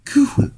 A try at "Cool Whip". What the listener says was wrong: You're saying it weird. Why do you put so much emphasis on the H?